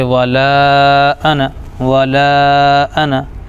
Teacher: پھر حمزہ پر زبر ہے ا، اور نون الف کے ساتھ ہے، لیکن انا کی نون پورے قرآن میں کہیں پر بھی نہیں پڑھی جاتی، صرف زبر پڑھا جاتا ہے